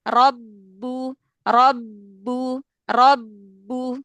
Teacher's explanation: Maka ketika bertasydid, ba sukun yang pertamanya itu jangan syiddah aja, jangan terkunci ya, tapi dia ada efek qalqalah, ada efek suara qalqalah yang nggak bisa keluar.